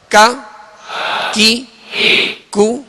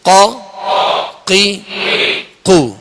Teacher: کاف کو جو ڈنڈی والا کاف ہوتا ہے اس کو باریک پڑھیں گے اور قاف جو 2 نقطے والا اس کو پر پڑھیں گے، موٹا پڑھیں گے. یہ ان میں فرق ہے.